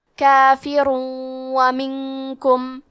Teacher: ادغام کا معنی ہے حرف کو حرف میں داخل کرنا، تو ہم تنوین کو واو میں ملا کے غنہ اور تشدید کے ساتھ ادا کریں گے · کلمت منکم میں نون ساکن ہے، پھر حرف الکاف ہے، تو ہم حکم الاخفاء کو ظاہر کریں گے اور اسے غنہ کے ساتھ ادا کریں گے